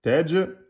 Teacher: On a dit que le jim, soukoun, c'est qalqala, tej.